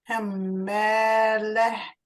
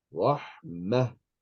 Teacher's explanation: When you get to the end of the word, pronounce it as a ha with a sukoon on top. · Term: ta marbuta